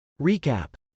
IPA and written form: rˈik.æp (recap)